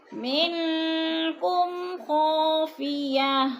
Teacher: کاف حروف اخفا میں سے ہے تو ناک میں آواز لے جائیں گے، غنہ کریں گے